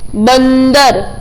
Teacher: न आ रहा है ना बीच में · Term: अनुस्वार